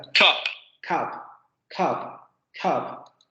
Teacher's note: La consonante oclusiva sorda se aspira. Y eso es lo que da esta característica tan airada a la palabra, ¿no? Con mucho aire y con esta característica a lo mejor que suena tan abierta.